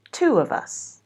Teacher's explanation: Instead of saying two of us, we would have the intrusive w sound to make it easier.